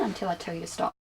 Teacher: did you hear the falling tone at the end